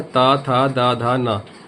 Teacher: आप देखिए, जो ऊपरी का जो जबड़ा है, उस दांत को आप देखिए, जब भी ता का उच्चारण करेंगे तो आपकी जो जीभ है वो आपके दंत को टच करती है, दांत को टच करती है, छूती है।